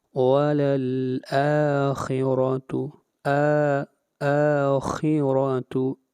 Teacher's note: آ کو لمبا کریں گے 1 الف کے برابر، آ کے اوپر کھڑی زبر ہے اور یہ مد اصلی ہے۔ خا حروف مستعلیہ میں سے خا کو موٹا پڑھا جائے گا اور را کے اوپر فتحہ ہے، را کو موٹا پڑھا جائے گا۔